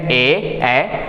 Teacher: ए और ऐ का जो है कंठ और तालू दोनों से बोला जाता है